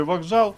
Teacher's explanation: в слові вокзал пишемо к але вимовляємо Ґ